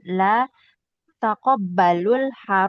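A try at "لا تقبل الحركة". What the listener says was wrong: La tak tak tak tak toknya sukun.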